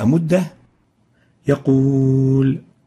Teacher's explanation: حرف الواو ساكن فيمكنني ان امد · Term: حرف مد